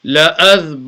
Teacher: Remember when the noon is mushaddad, you will do a gunna there as well.